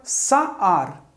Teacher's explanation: Contudo, está sob uma sílaba tônica. Por isso, usa-se o patar, que é um A breve, em lugar do kamatz gadol, ou seja, do A longo.